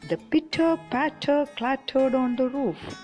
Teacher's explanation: An example to consonance is the pitter patter clattered on the roof. Here, the t sound is repeated, but not at the beginning of words